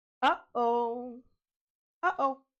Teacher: The tiny catch in the middle, that moment of silence before the second syllable is a glottle stop.